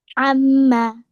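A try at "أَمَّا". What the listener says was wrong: Amma. Very good. Do more gunna for 2 counts, please.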